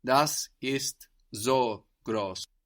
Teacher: So the S sounds like a Z.